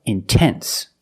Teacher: I put the stress after the NT, so I have to pronounce the T.